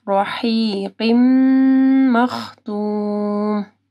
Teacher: رحی، ہا کو واضح پڑھنا ہے، قاف کو موٹا پڑھنا ہے، پھر غنہ آ رہا ہے، ٹھیک ہے. تنوین کے بعد میم مشدد ہے، ادغام آ رہا ہے غنہ کے ساتھ